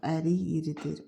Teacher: Ərik sözünün sonundakı samit k samiti y tələffüz olunacaq